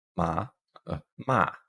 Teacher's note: down and up as an ma we have a high falling one so one that starts high that goes low · we have a high falling one, so one that starts high that goes low, ma, ma, and then we just have a neutral tone, ma, which would indicate a question.